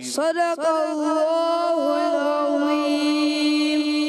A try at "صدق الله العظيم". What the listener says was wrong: دوبارہ صدق اللہ العظیم. صاد کو موٹا رکھنا ہے، صدق اللہ.